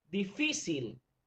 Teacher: Vemos que la palabra difícil tiene la sílaba tónica en fi.